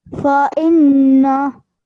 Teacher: You have to keep that noon sound in your throat. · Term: nasal sound